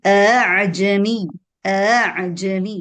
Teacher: We give it mm, something called tasheel, which is a sound between the hamza and the mad alif in this case.